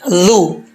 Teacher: زبان کی نوک اوپر والے دانتوں کے نچلے حصے سے لگے گی تو یہ ذال پڑھا جائے گا. ذال زبان کا جو سرا ہے، ٹھیک ہے.